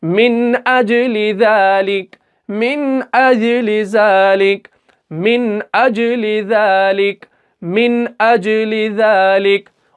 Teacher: इजहार कहते ही है जाहिर करने को, तो हमें यहाँ पे नून को जाहिर करना है